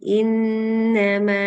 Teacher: tambah dengung nun tasdid dengung dua harakat